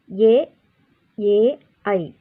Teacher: ಇವು ಕಂಠ ಮತ್ತು ತಾಲುಗಳಲ್ಲಿ ಹುಟ್ಟುವುದರಿಂದ ಇವುಗಳನ್ನು ಕಂಠಾಲವ್ಯ ಎನ್ನುತ್ತೇವೆ